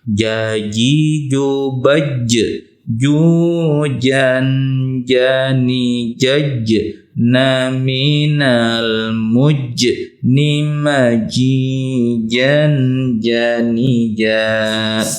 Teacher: Huruf jim ada di al-lisan di nomor C, lidah bagian tengah disentuhkan dengan langit-langit, sama seperti huruf shin, sama seperti huruf ya.